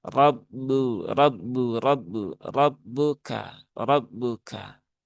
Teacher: roknya tafkhim ya, tebal karena dia berharokat fathah, maka roknya dibaca dengan tebal.